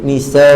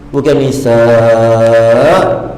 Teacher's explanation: Walaupun hamzah yang tidak ada alif, tapi dia tanwin bagi dua di atas, tetap kita baca dengan man'iwad, dua harakat.